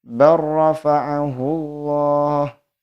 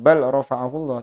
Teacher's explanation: lam dimasukkan terhadap huruf ro, diidghamkan secara sempurna